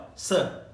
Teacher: इसके अलावा ल और स, जिसको आप सड़क वाला स कहते हो ना, इसका वास्तविक नाम है दंत्य स, क्योंकि दांतों से इसकी आवाज निकलती है ना, जीवा दांत को स्पर्श करती है ना, तब ये स उच्चरित होता है, इसको इसलिए दंत्य स कहते हैं।